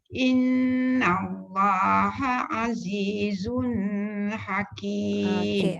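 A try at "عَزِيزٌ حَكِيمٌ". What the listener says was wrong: Azizun tu tak dengung. Azizun.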